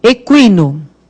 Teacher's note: Aí o U tem som, né? O I que é fortão, a gente põe o trema.